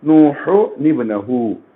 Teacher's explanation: ایسے حمزے کو دیکھ کر آپ وہاں پر اگر وقف نہیں کرے ہیں آپ تو پھر نون قطنی کا استعمال کریں گے. نون قطنی کو ہمیشہ زیر لگا کر پڑھیں گے